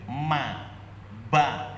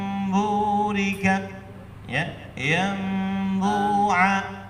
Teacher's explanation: Suara mim terdengar samar karena dua bibir tidak merapat sempurna, sebagaimana dijelaskan Imam Al-Jamzuri dalam syairnya, wassalisul iqlabu 'indal ba' miman bi ghunnatin ma'al ikhfa.